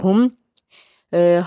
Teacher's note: آگے ہا میم پیش ہم، ہا حرف ہلکی کا حرف ہے، حلق کے نچلے حصے سے اس کو ادا کریں گے